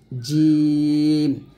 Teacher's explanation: জিহ্বার মধ্যখান তার বরাবর উপরের তালুর সঙ্গে লাগিয়ে জিমটা উচ্চারণ করতে হবে জিম অর্থাৎ জিম যখন উচ্চারণ করবেন জিহ্বাটা দাঁতে লাগবে না আর